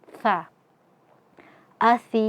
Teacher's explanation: tempat keluar hurufnya adalah ujung lidah bertemu dengan ujung gigi seri atas sehingga saat mengucapkan huruf sa ujung lidah kita sedikit keluar ya.